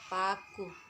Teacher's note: Ciri-ciri mati, oral, bilabial, dan plosif.